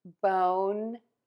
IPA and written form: boʊn (BONE)